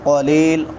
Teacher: قاف موٹا ہوگا، یا مدہ ہے